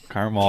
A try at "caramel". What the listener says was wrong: Caramel. It's caramel. remember the other A that you said in elementary? There's an A in caramel.